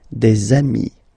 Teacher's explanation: if you make the liaison, so the link between the two, you will get des amis